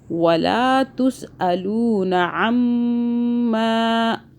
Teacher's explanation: میم مشدد پہ گنہ ہوگا 2 سیکنڈ کا